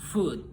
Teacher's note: tongue position, back, tongue height, close, lip rounding, rounded.